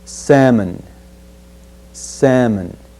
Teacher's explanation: when we look at the word the fish word we will omit the L sound